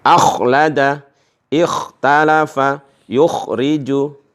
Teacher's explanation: Kalau kha yang ada titik satu di atas ini, tenggorokan kita terasa ada ngoroknya, ya, ngorok.